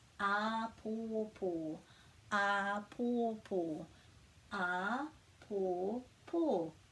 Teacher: This has got 3 macrons on, and it's kind of each syllable is actually stressed the same